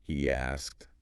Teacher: a little y or W sound popping in between